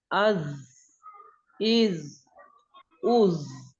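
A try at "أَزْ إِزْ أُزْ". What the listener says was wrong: देखिए देखिए अज ऐसे हम्स ना पैदा करे. इसमें हम्स नहीं होता कि सांस इसमें निकले, इसमें आवाज निकलनी चाहिए. अज अज.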